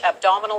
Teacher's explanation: there is rising intonation when she said abdominal